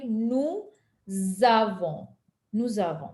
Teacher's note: S is pronounced with a Z sound and it is pronounced as if it is the first letter of avant. So it is going to be something like nous avons. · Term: liaison